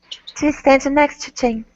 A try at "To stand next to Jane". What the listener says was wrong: Instead of next to, it's next to. Combine the T sounds. So don't pronounce two T's, only one T sound.